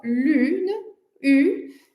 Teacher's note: Então, o som lune, U, é um som oral, ele é produzido apenas na boca, né? O ar que sai dos nossos pulmões, ele sai completamente pela boca quando a gente está produzindo esse som.